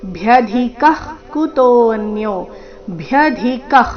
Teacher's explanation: ಭ್ಯ ಧಿ ಮಹಾಪ್ರಾಣ ರಸ್ವ ನಂತರ ಅಲ್ಪಪ್ರಾಣ ಕ ಇದೆ